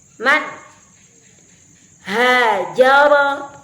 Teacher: Idha nun sukun yang bertemu dengan huruf ha misalnya Ma hajaro pada lafaz hajar sudah jelas terlafazkan dengan makhrajnya yang jelas yaitu melalui tenggorokan